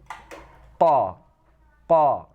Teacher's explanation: Kalau huruf qaf, ya, yang pertama yaitu huruf qaf, pangkal lidah dan langit-langit. Berarti huruf qaf ini keluarnya di pangkal lidah kita dan mengenai langit-langit.